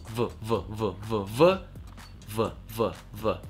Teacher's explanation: верхние зубы, касается нижней губы, выдуваем воздух и голос · касается нижней губы выдуваем воздух и голос в в невозможно Это произнести неправильно у вас нету других верхних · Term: звук буквы V